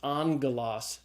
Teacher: the first gamma is pronounced as a gamma nasal, as an N sound